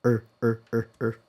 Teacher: So, just like uh uh d n n in British English. In American English, it is pronounced with an R-colored vowel